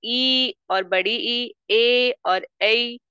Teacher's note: जीव के अग्र भाग से ई और बड़ी ई ए और ई ये आपका निकलता है